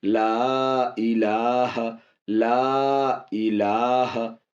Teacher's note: لا الگ ورڈ ہے، الہ الگ ورڈ ہے، دو مل کے بن رہے، اس لیے مد تو ہوگا لیکن تھوڑا سا کم ہوگا اس میں